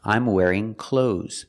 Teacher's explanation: there is no th sound it is pronounced cloes like close the door I'm wearing clothes